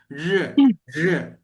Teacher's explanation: Ya, jadi mereka tidak ada pengucapan mereka yang ngomongnya kata re, itu nggak ada. Yang ada adalah seperti antara R dan J, ya. Sedikit R-nya agak sedikit dikurangi, agak mendekati huruf J.